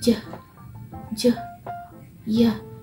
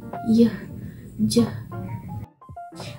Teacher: In a palatal consonant, is the body of the tongue is approaches or touches the hard palate